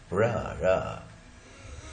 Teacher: अब ये पूरी तरह से चिपकता कहीं भी नहीं है। Is produced by curling the tip of the tongue toward inside the mouth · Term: रेट्रोफ्लेक्स